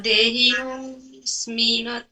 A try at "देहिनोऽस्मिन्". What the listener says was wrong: नहीं, ठीक से ठीक से, देहिनो अस्मि न नहीं है, मैंने अभी बताया था कि अस्मिन न के नीचे मात्रा देखिए तो फुल स्टॉप हो जाता है, वहाँ अस्मिन न नहीं है, अस्मिन, वहाँ पर एक फुल स्टॉप लगाना है, देहिनो स्मिन, ठीक है।